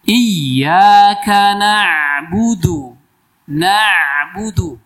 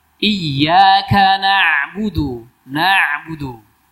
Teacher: Huruf ain mengalir. Karena punya sifat apa? Tawassut bainiyah.